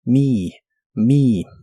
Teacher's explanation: Y usaremos la palabra me, es la terminación me en ideas como recordarme o ayudarme. La E se pronuncia como una I larga o doble.